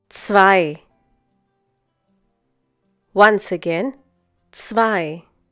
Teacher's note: The German consonant Z is pronounced like the English TS sound that is found at the end of words such as mats, pots, bits.